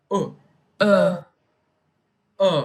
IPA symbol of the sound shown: ʊ